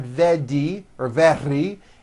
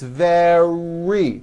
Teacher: the r occurs in the middle of the word it's not a d sound